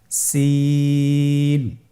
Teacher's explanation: জিহ্বার আগা সামনের নিচের দুই দাঁতের পেট ও আগার সঙ্গে লাগিয়ে উচ্চারিত হয়